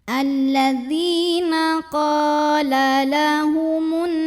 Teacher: Karena ada alif yang didahului baris fathah, maka cara bacanya qaf yang berbaris fathah kita panjangkan dua harokat saja. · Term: mad tabi'i